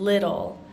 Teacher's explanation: would almost call a hard t or like a soft D it's somewhere in between a t and a d